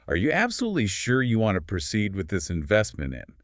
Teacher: A high-pitched strained voice when someone asks